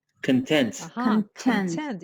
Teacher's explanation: the stress goes on the second syllable and it's an adjective